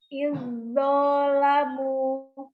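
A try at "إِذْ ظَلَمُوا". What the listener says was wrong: Dha-nya nggak ada mat.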